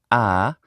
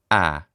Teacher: Now to an American ear, this vowel sounds pretty much the same as the Italian vowel like parlare or amare, but it's just a little bit more fronted. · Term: open front unrounded vowel